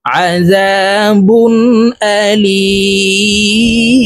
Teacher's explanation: লি এখানে তিন আলিফ টেনে মিমকে সাকিন করতে হবে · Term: মধ্যে আরজি